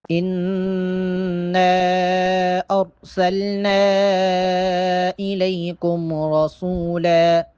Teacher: نون پہ پہلے غنہ کریں گے، اس کے بعد جو نون پہ مد ہے یہاں پر مد کریں گے